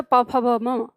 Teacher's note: जिसके उच्चारण में हमारे दोनों होंठ आपस में मिलते हैं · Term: ओष्ठीय